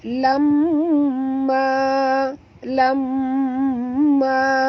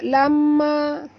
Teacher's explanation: mim bersabdu, wajib dengung, wajib al-gunah okey. Lam tu sama panjang dengan ma.